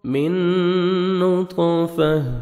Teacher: یہاں پہ آپ نے ادغام کرنا ہے غنہ کے ساتھ، ٹھیک ہے، نوز میں ساؤنڈ لے کے جائیں گے۔